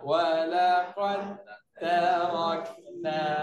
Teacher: Tak ada sikit pun bunyi dal. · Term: masuk habis